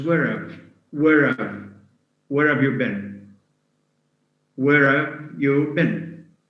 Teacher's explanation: So the auxiliary have loses in the first, it loses the ha sound. In the second, it loses both. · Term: weak forms